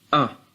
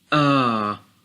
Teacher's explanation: we say Hamzah, Fathah, A, which equals only 1 beat, while if we said Hamzah, Fathah, Alif, A, it is 2 beats